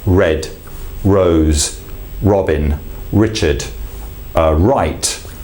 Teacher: Now, in the English R is literally used, the tongue tip comes to curl up against the alveolar ridge, and then it just releases forward. I don't know if you can see that clearly on the camera, but I'll open my mouth up a little bit more.